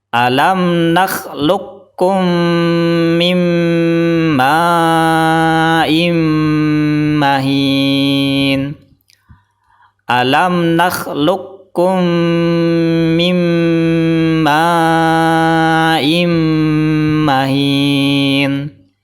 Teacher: Hukum qalqalahnya atau pantulannya hilang. Jadi qaf sukun langsung dimasukkan ke kaf tanpa qalqalah, tanpa pantulan. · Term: idgham mutaqarribain